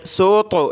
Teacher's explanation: یہ طا ہے، موٹی طا کرنا ہے، اس کو موٹا کر کے پڑھنا ہے